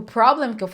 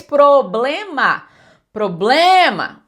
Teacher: a gente não tem essa entonação toda no blem como a gente tem em português. Porque em português, problema.